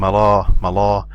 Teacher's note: when I do elevation at the back part of the tongue it makes the sound of Mal